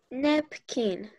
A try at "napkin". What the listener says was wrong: Me marcaste mucho la I. Sonó mucho como kin. Tiene que ser ken. Acuérdate que es una E. E.